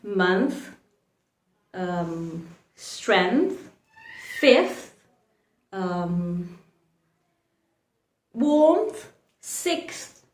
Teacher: you have to pronounce the th letter unvoiced